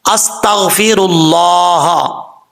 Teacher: سین حروف صفیرہ میں سے، سیٹی کے ساتھ پڑھا جائے گا · را کے اوپر پیش ہے، را پر پڑھا جائے گا، موٹا پڑھا جائے گا